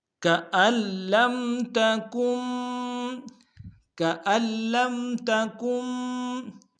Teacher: كَأَن لَّمْ تَكُن، كَأَن لَّمْ تَكُن، كَأَن میں حمزہ کو لام کے سامنے آئیں گے، لام کے اوپر تشدید زور دیں گے، نون کے ساتھ نہیں ملائیں گے، لام کو میم کے سامنے لانا ہے، غنہ کریں گے۔